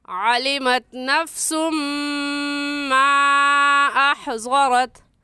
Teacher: اس مد کو 3 الف کے برابر کھینچ کر پڑھیں گے، نہ اس سے کم اور نہ ہی اس سے زیادہ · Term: مد منفصل